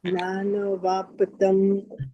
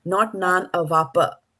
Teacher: you have to stop at the P, right? And then don't continue with the A